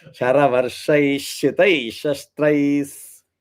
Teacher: Saravarshai Shitai Shastraihi So Sharavarshaihi Shitaihi will become Sharavarshaish. That Visarga will become Ish sound. So Visarga will turn to Ish. If you don't say Ish sound, then you are not saying the Visarga.